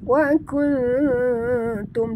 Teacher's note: Wa kuntum nun mati bertemu ta ikhfa hakiki dengung. Wa kuntum dengungnya samar-samar ya. Dan kita sorokkan bunyi nun ke dalam ta